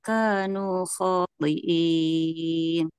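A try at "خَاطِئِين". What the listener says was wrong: Bukan so ini, huruf kho.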